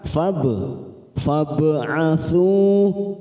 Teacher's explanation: Alif namun di sini bertemu dengan huruf ba sukun maka siap masuk pada huruf ba sukun kita pantulkan namanya bacaan qalqala sugro